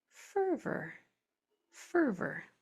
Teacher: And when o r comes at the end of a word like that, it is usually unstressed. An unstressed o r sounds like an R.